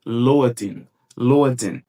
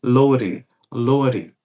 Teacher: É como se esse D aqui ele perdesse o som de D e ficasse como se fosse com o som do nosso R fraco aqui no português.